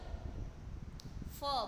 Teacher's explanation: જેમ કે જો ફ, બરાબર, ફનું ઉચ્ચારણ એ હોષ્ઠ્ય મહાપ્રાણ વ્યંજન છે, કેમ કે એના ઉચ્ચારણ વખતે ઉપરનો હોઠ અને નીચેનો હોઠ એકબીજાને સ્પર્શે છે અને એના કારણે જે ધ્વનિનું ઉચ્ચારણ થાય છે એને હોષ્ઠ્ય વ્યંજનો કહેવામાં આવે છે.